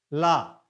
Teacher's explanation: और हवा दोनों किनारों से निकलती है इसीलिए इसको पार्श्विक व्यंजन कहा जाता है · पिछले का मतलब पार्श्व होता है, पिछले का मतलब पार्श्व होता है। ला के उच्चारण में हवा जीभ के पार्श्व, पिछले भाग के दोनों किनारों से निकलती है · ला के उच्चारण में जीभ पिछले भाग से टच करती है और हवा जीभ के दोनों किनारों से निकलती है। ला, जीभ आगे आकर टच कर गई और हवा दोनों किनारों से निकलती है